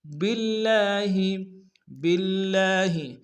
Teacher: با کو لام کے سامنے لائیں گے لفظ اللہ کے، لام کے اوپر تشدید زور دیں گے، لام کے اوپر کھڑا زبر ایک انداز میں کھینچیں گے